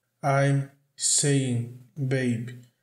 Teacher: você começa pronunciando o som do N normal e vai movimentando a sua boca para formar o som do G, mas você não chega a soltar o G, a pronunciar o som do G.